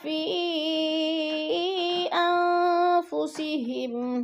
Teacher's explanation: فی پہ مد منفصل ہے، 4 الفی مد ہے، 4 الف کے برابر ہم نے اس کو لمبا کرنا ہے